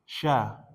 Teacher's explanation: Syin sya di mana tempatnya? di tengah lidah ya, tengah lidah dengan langit-langit tapi ada jarak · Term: makhraj